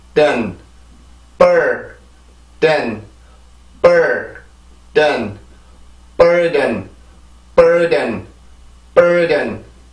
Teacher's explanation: 이렇게 해서 이음절이 돼요. 큰 리듬이 하나가 있고 작은 리듬이 하나가 있게 되죠